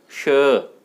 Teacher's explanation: जबकि ये तालव्य से, तालु से बोला जाता है श, इसमें दोनों दांत आपस में सटते नहीं हैं, मिलते नहीं हैं, दोनों में पर्याप्त अंतर है